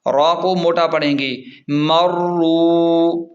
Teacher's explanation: را واو پیش رو، را کو موٹا پڑھیں گے